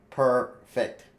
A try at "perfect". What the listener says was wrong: That's not 3 syllables.